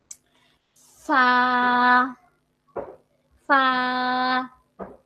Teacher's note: আপনার 2 ঠোঁটের পেট, নিচের ঠোঁটের পেটকে আপনি সামনের উপরে 2 দাঁতের আগার সঙ্গে লাগান। হাত দিয়ে ধরে লাগিয়ে দেই, পরে উচ্চারণ করি।